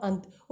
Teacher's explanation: अनुस्वार जो है इसका प्रयोग नासिका से, उच्चारण स्थान यानी कि इसका प्रयोग सिर्फ हमारी नाक से होता है। तो तभी अगर हम, जैसे कि हमने बोला अंत, अगर आप अपनी नाक को दोनों हाथों से बंद कर लेंगे और इसका उच्चारण करोगे तो रुकावट आएगी।